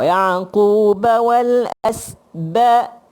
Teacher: ain tu dia liat, dah dikeluar daripada rengkung kita ain.